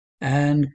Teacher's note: It's a velar K, slightly palatalized and with a frication in there to show it's a K rather than a C, because the C takes the K sound because there are more C's, 50% more C's for the K sound than K's.